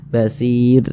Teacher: Kalau ada huruf ro sukun sebelumnya nih ada huruf ya sukun, maka otomatis huruf ro-nya itu dibaca tipis, dibaca tarkik begitu. Sehingga pangkal lisan kita tidak naik terangkat ke atas, huruf ro-nya kita tipiskan.